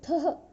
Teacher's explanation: मध्यम पुरुषः सि, थः, थ, सि, सी मत बोलना, सि, थः, थ। इसको थः, ये विसर्ग को ह बोलना है आपको, ठीक है। ह का उच्चारण करेंगे।